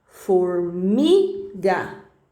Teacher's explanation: se for no meio da palavra né a penúltima sílaba como a palavra formiga aí é uma paroxítona